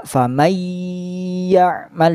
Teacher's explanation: Tadi pun sama, yang huruf nun sukun bertemu ya, seolah-olah huruf nunnya dihilangkan. Jadi bacanya langsung masuk ke huruf ya dengan ditahan selama satu alif atau dua harokat. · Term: idgham bi gunnah